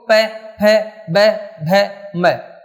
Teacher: वैसे देखो प, फ, ब, भ, म सभी में होठ जो हैं एक दूसरे के स्पर्श कर रहे हैं, और जब हट रहे हैं तो इनका उच्चारण हो रहा है। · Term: ओष्ठ